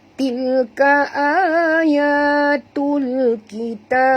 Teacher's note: Jadi tanda mati di atas ni. Jadi bila berhenti, huruf ba di hujung, maka kita kena lantunkan dia dengan lantunan yang agak berat, ya. Iaitulah qalqalah kubra.